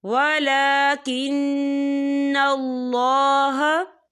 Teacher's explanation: ولا کھڑی حرکات ہے، تو ہم اسے 2 یا 3 حرکت کی برابر کھینچیں گے